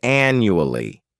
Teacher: this word has four syllables and the stress is on the first syllable a n n u a l l y the second syllable